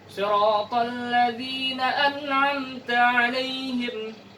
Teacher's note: huruf nun sukun atau tanwin dibaca dengan jelas tidak ada tambahan berupa dengungan atau gunnah atau tambahan lainnya